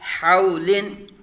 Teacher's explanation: واو ساکن سے پہلے زبر واو لین ہوگا بغیر کھینچے بغیر جھٹکا دیے